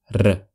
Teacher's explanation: r as in ring but tougher not a soft R it's R your tongue vibrates